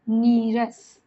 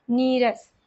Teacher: विसर्ग लुप्त होकर के पहले का जो स्वर है वो दीर्घ हो जाता है